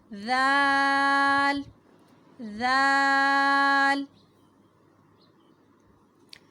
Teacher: ذال بھی نرم حروف میں سے ہے اور اس کی ادائیگی ایسے ہوگی کہ زبان کی نوک سامنے کے دو دانتوں کی کنارے سے ٹکرائے گی, نوک سے ٹکرائے گی تو ادا ہوگا ذال ذال.